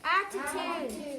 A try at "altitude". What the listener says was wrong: There's an L. Altitude. Not attitude.